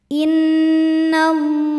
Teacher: Lam pada lafaz Allah atau lam jalalah dibunyikan secara tafkhim karena huruf sebelumnya berbaris fathah, maka dibacanya tebal.